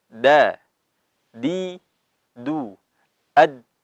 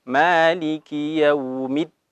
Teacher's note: dal juga memiliki sifat syiddah. Jadi harus masuk. Syiddah kuat artinya.